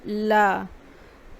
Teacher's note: हवा अगल-बगल से निकलती हुई महसूस होती है